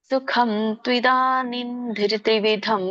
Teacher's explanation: ಅಲ್ಲಿ ಕೂಡ ನನೇ ಬರುತ್ತೆ ಯಾಕಂದ್ರೆ ಮುಂದಿನ ಒಂದು ಅಕ್ಷರ ಏನಿದೆ ತ ಇದೆ ಅನುಸ್ವಾರದ ಮುಂದೆ ಸೊನ್ನೆ ಮುಂದೆ ಇರುವಂತ ಅಕ್ಷರ ಏನಿದೆ ತ ಇದೆ ಸೋ ಇಲ್ಲಿ ಕೂಡ ತ್ವಿದಾನಿನ್ ಅಂತ ಬರುತ್ತೆ